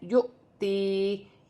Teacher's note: یہاں پر حمزہ پر جزم کی حرکت ہے تو یہاں جھٹکے کے ساتھ پڑھا جائے گا، جیسے یؤتی. یا ساکن سے پہلے زیر آ رہی ہے تو یا مدہ بن رہی ہے، اسے بھی ایک الف کی مقدار کھینچ کر پڑھا جائے گا